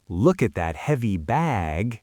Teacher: bag is the last word before I pause, that's when the vowel really expands.